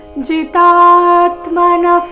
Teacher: ಇಲ್ಲಿ ಜಿ ರಸ್ವ ತ ದೀರ್ಘ ಬಂದು ನಂತರ ಆಘಾತ